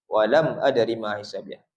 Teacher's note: Mim mati bertemu hamzah ataupun alif Mim mati walam adri ma. Izhar izhar syafawi di situ hukumnya.